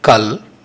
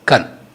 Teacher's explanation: This Kal deformed to Kan as L sound changed to N sound.